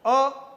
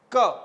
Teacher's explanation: एक आपके सामने लिखा है अ और एक वर्ण लिखा है क, दोनों में ही मुख से हवा का बाहर निकलना आवश्यक है, अन्यथा उच्चारण नहीं होगा। लेकिन अ के उच्चारण में वायु जिस गति से बाहर निकलती है उतनी गति क के उच्चारण में नहीं होती है